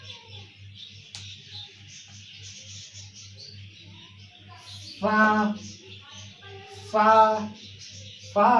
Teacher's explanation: उसके बाद आता है फा का मखरज। फा फा फा अदा होता है नीचे वाले होठों का दरमियान और ऊपर के जो फ्रंट के दांत है इनके लगने से। ये नीचे वाले होठ के दरमियान में ऐसे लगेंगे तो वहां से अदा होगा फा फा फा फा फा फा।